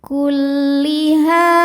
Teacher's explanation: Bi'ayatina kulliha, ha hukumnya mad tabi'i dhahiri sebab ada alif sebelumnya fathah. Cara bacanya huruf ha panjang 2 harokat.